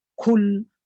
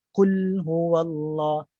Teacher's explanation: Tak ada pun aliran suara. Tak ada. Dia jahar. Bukan hamas. Kalau hamas dia kul berlebihan.